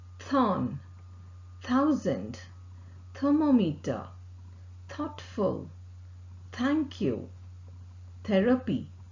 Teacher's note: Th sound is a voiceless sound and articulated with the tip of the tongue close to the upper front teeth. The air escapes between the upper front teeth and tip of the tongue. Vocal cord does not vibrate. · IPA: θ